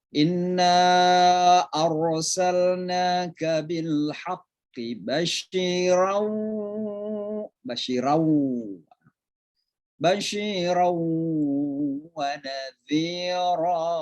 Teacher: Lalu pada ayat yang kedua yang ingin saya tekankan adalah ada suara nun di sini, basyiran, ketemu dengan wawu, maka itu namanya idgham bigunna. Jadi suara n masuk ke huruf wawu.